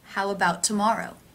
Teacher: the ow as in now diphthong linking to the schwa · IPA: [haʊ‿ˈə baʊt|‿tə ˈmɔr oʊ]